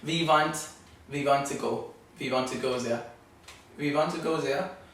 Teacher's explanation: the W's becoming V's. That's very, very German.